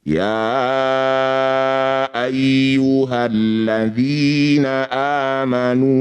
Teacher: Ya ini disebut bacaan maqabi. Maqabi bertemu dengan hamzah di lain kata disebut bacaan mad jaiz munfasil. Ya panjangkan 5 harokat.